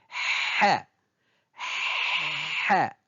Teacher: Elle se prononce au niveau du milieu de la gorge, au niveau de l'épiglotte. On entend une sorte de frottement sec au passage de l'air. Répétez plusieurs fois sa prononciation jusqu'à ce qu'elle sorte.